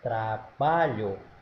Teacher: a sílaba tônica não é a última é a penúltima